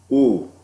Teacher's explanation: I call that sound high, high, back sound. I call it rounded. I call it tense